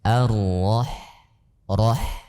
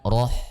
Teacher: Ha sukun itu dibaca dengan tipis bukan dengan tebal